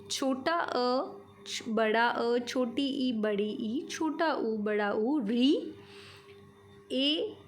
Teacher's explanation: इनको बोलते वक्त जो हमारे मुख से वायु निकलती है वो बिना किसी बाधा के निकलती है, उसे किसी भी तरह की कोई रुकावट नहीं होती है। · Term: स्वरों